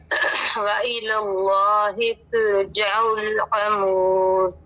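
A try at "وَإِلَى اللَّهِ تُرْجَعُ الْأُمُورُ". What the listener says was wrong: अमूर नहीं उमूर। तुरजा में देखिए रा साकिन है, मा कबल पेश है तो ये रा मोटा कीजिए। तुरजउल उमूर,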